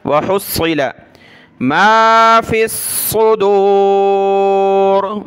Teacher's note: ہا کو صاد کے ساتھ ملایا، صاد کو سخت کیا